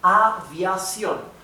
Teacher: has the stress, the intonation in the last syllable